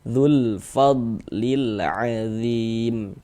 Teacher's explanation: Huruf lamnya dibaca izhar dibaca jelas. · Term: alif lam qamariah